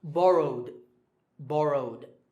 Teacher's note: the last sound is w, which is voiced, so the ed ending becomes d.